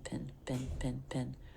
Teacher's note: lightly releasing the P into the vowel